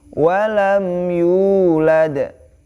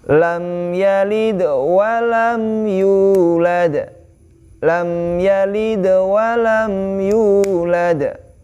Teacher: huruf ya-nya dipanjangkan 2 harokat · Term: mad